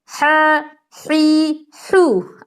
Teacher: اس میں آپ کو حلق کا بیچ والا حصہ جو ہے اس پہ زور دینے کی ضرورت ہے۔